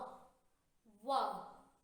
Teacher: तो व का उच्चारण स्थान दांत और ओष्ठ दोनों की सहायता से होता है, दांत और होठों की सहायता से होता है व। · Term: दंत्योष्ठ